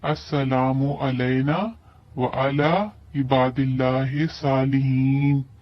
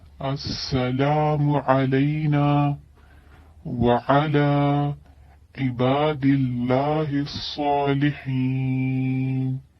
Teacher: اس میں جو عام طور پہ غلطی کی جاتی ہے عین کی جگہ حمزہ پڑھا جاتا ہے